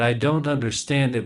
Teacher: we stress the final syllable of understand